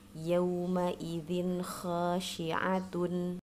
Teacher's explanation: Kasrah tain bertemu dengan huruf kha menjadi dibaca dengan jelas.